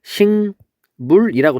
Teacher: 그러니까 예를 들면 잡목이라고 했을 때 여기 잡의 비읍이 뒤에 있는 요 미음과 만났을 때 요 미음이 얘를 일로 끌어당겨요. 그래서 비음이 아닌 게 비음처럼 됐다. 그랬을 때 우리는 비음화라고 불러요.